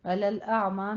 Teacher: علی الاعمى میں عین وسط حلق سے نکلے گا